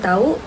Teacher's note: Seterusnya bagi perkataan tahu iaitu tahu iaitu difton au gabungan a vokal depan rendah dan u vokal belakang sempit. Pergerakan lidah depan ke belakang dan bibir hampar menjadi bundar.